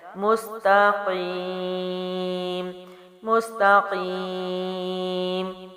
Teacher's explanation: مس باریک ہے، تا باریک ہے، قاف موٹے حروف میں سے ہے، اور یا مد ہے اور اس کے بعد وقف ہے تو 3 الف جائے گا۔